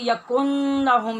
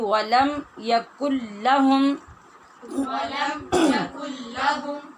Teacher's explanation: لام اور را، یہ دو حرف جب آ جائیں تو یہاں پر غننے کے بغیر وہ جو نون کی آواز ہوتی ہے اس کو لام اور را میں ملا دیا جاتا ہے، ضم کر دیا جاتا ہے، گم کر دیا جاتا ہے، اس کو کہتے ہیں ادغام کرنا۔